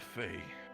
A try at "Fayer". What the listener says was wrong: The Fayer, with an R at the end. The Fayer. They call themselves the Fayer folk.